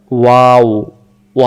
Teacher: অক্ষরটা দুইটা ঠোঁটের মাঝখান থেকে হবে ওয়াও এখানে বলেন তো ওয়াও ওয়া অক্ষর বলতে কোন জিহ্বা লাগে না দুই ঠোঁট থেকে উচ্চারণ · ওয়াও অক্ষর বলতে কোনো জিহ্বা লাগে না, হ্যাঁ, দুই ঠোঁট থেকে উচ্চারণ হয়, গলা থেকেও না।